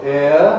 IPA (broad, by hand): ɪə